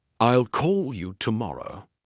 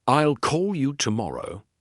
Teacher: For example, in the sentence, I will call you tomorrow, the strong words are call and tomorrow. The weak words are I and will.